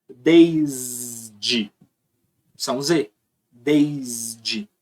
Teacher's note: S daqui do desta você vai pronunciar como um s mesmo esse S daqui do desde você vai pronunciar como se fosse um z · só que esse S daqui ele é menos sonoro só que quando ele antecede um som que é mais sonoro que é o d ele pega ele copia o valor do traço sonoro do som da frente e aí ele fica mais sonoro tá então esse S daqui